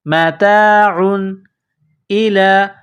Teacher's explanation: و متا، عین دو پیش عن، یہ دو پیش تنوین ہے، تنوین کے بعد حمزہ ہے، حروف حلقی ہے تو یہاں غنہ نہیں کریں گے